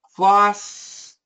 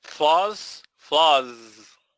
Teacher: The only thing different is floss has no vibration, flaws has vibration.